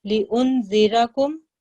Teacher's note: را کے پر فتح ہے، موٹا پڑھا جائے گا